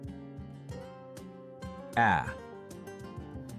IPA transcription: æ